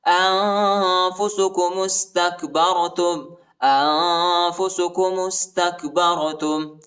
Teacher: میم کو سین کے ساتھ ملائیں گے، الف نہیں پڑھا جاتا، تا کو کاف کے ساتھ ملائیں گے، اور با کو را کے ساتھ ملائیں گے، را کو موٹا پڑھیں گے۔